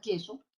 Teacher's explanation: en la palabra queso, la primera consonante, tengo la K, ¿no? Que es un fonema velar